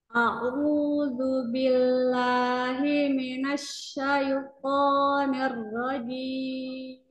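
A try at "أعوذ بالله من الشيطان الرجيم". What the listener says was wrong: Ya, itmamul harokatnya atau kesempurnaan harokatnya pada kasroh diluruskan lagi. Ni, jangan nir, nir, nir, nir rojim.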